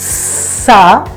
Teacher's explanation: look at the air coming out, the breath coming out, hissing in between two teeth